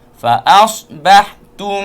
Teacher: Fa'asbahtum. Situ ada dengung, mim mati bertemu dengan ba